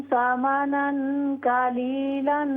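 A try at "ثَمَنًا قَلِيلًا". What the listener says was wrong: काफ को मोटा कीजिए। समनन कलीलन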